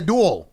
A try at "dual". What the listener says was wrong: It just sounds like the same word, but you're saying two different words.